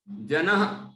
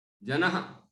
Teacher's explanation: जो विसर्ग है ना, ह जैसा उच्चारण होता है, हल्के हल्का सा